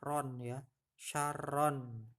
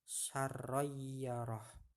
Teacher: Tapi kalau di depannya ada, setelah tanwin ada huruf ya, karena ya itu adalah idgham bihuna, maka itu disebut idgham bihuna dan dibacanya ronnya lebur ke huruf ya